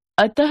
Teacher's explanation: अः का उच्चारण ह व्यंजन के रूप में किया जाता है। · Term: विसर्ग